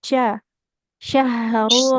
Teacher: huruf shin, lidah, tengah lidahnya menempel ke langit-langit atas